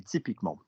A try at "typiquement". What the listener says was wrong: No, I didn't say con. Do what I do. Typiquement.